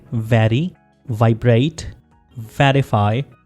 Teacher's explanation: इसमें वी letter को pronounce करते हुए आप लोअर लिप को अपर टीथ के साथ टच करेंगे।